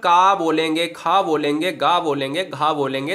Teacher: तो कंठ वर्ग वाले जो है वो कंठव कहलाते हैं। संस्कृत में कंठ से आने वाले वर्ड कंठव कहलाते हैं